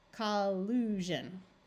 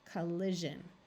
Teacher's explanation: if you have the verb collude and you want to turn it into the noun collusion, it's going to take on a zh sound rather than a sh sound.